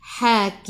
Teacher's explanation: Sebelum huruf akhir ada ya yang tak ada baris mat ada sukun, boleh baca 2, 4 atau 6 harakat, matikan dengan huruf mim. Rapatkan bibir, tutup mulut.